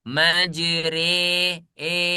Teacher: Nah, tulisannya majroha. Tapi ketika rya dibaca dia menjadi imalah menjadi e